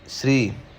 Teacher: ਸ੍ਰੀ ਸੱਸਾ ਪੈਰ ਵਿੱਚ ਰਾਰਾ ਹੈ, ਇੱਥੇ ਰਾਰਾ ਪੂਰਾ ਬੋਲਿਆ ਜਾਵੇਗਾ